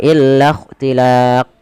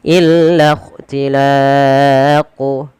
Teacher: pada lafal qaf sendiri itu ada bacaan qalqalah yang dimana dia harus dipantulkan.